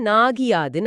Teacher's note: ம், இப்ப நாகு பிளஸ் யாது சேரும்போது நாகியாதுன்னு ஆகும். அங்க கீ மாதிரி ஒலிக்கிற இகரம் முழுசா ஒரு மாத்திரை ஒலிக்காம அரை மாத்திரையா குறுகிடும் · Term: குற்றியலிகரம்